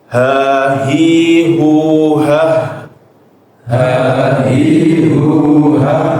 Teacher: bedanya juga huruf H itu dikasih aliran nafas ya Bapak, aliran nafas. Terutama ketika dia berhenti. Jangan berhenti kita baca cuma ah.